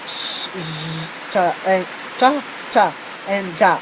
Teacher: And the fifth one is the palatal. It sounds produced with the front part of the tongue against the hard palate just behind the alveolar ridge